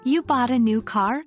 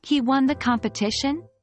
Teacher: the rising intonation at the end of the statements conveys the speaker's astonishment or skepticism